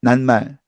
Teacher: 우린 T와 M이 만나면 니은이 나옵니다. 그래서 T와 M이 만나면 니은 나오죠.